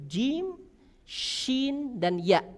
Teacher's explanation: Bagian tengah lidah menyentuh langit-langit yang sejajar di atasnya